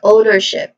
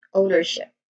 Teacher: the pronunciation of this word is ownership, with the first syllable being stressed.